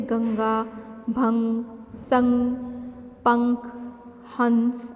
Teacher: इसका उच्चारण करते समय हवा नाक से बाहर निकलती है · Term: अनुस्वार